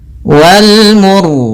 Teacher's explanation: ro-nya di sini kita baca dengan ro tebal disebabkan karena sebelum huruf ro yang disukunkan ada huruf yang dhammah.